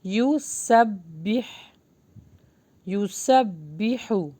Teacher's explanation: یہاں پر نا سین جو ہے با سے ملے گا، اور با کو تھوڑا ہم مضبوطی کے ساتھ پڑھیں گے